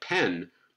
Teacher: little bit afterwards we'll have this glottal spreading gesture so that when the labial gesture is released it's released into a spread glottis this is gonna give us aspiration now the spread glottis is going on but actually the vowel